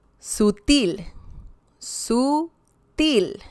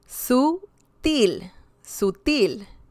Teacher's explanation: we can hear some stress on the last syllable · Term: stressed syllable